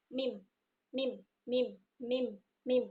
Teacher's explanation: Kemudian huruf mim ini melibatkan rongga hidung. Jadi bedanya adalah huruf mim itu melibatkan rongga hidung. · Nah, caranya sama, menempelkan bibir atas dan bibir bawah, kemudian menahannya dengan sempurna, lalu menahan udara di belakang kedua bibir tersebut, merendahkan langit-langit lunak, maka akan keluar udara di rongga hidung